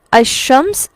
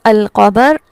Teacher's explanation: یہاں پر ادغام ہو گیا. الشمس اس میں لام لکھا ہوا تو ہے، پڑھا نہیں جا رہا، لیکن القمر یہاں پر لام لکھا ہوا بھی ہے اور پڑھا بھی جا رہا ہے